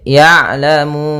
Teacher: ada sukun yang ditimbulkan karena waqaf yaitu nunnya menjadi Sukun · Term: Mad Arid lisukun